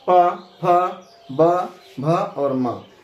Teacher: प, फ, ब, भ और म। इन सब का उच्चारण स्थान ओष्ठ होता है, क्योंकि इन वर्णों को बोलने में आपका ओष्ठ सट जाता है